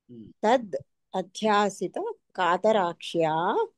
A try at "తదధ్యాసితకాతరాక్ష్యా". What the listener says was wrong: అక్కడ తదధ్యాసిత అని కలిపేయండి, విడది వద్దు, విడదీయద్దు,